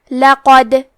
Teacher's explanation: حرف دال پہ جزم ہے. یہاں دال کا حکم ہے قلقلہ. قلقلہ کا معنی ہے حرف ساکن کو ہلانا، تو ہم یہ حرف کو ہلاتے ہوئے یہ کلمہ کو پڑھیں گے.